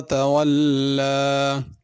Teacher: लाम के ऊपर खड़ी ज़बर है, इसको अलिफ की तरह पढ़ना ज़रा खींच के